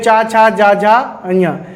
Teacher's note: चा, छा, जा, झा, अञा को बोलते सर जो हमारी जीभ है वो तालू से टकराती है।